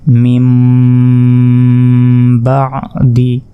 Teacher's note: নুন সাকিনের পর কলবের অক্ষর বা এসেছে তাই এটাকে মিম দ্বারা পরিবর্তন করে আমাদেরকে পড়তে হবে